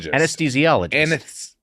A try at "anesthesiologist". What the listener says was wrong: I think you're seeing it, the TH, but you don't have to say the TH. For whatever reason, it didn't sound right. did say it right.